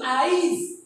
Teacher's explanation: আজি ইটা এখানে পরে উচ্চারণে, কিন্তু আইজ ইটা আগে চলে আসছে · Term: পরের ই আগে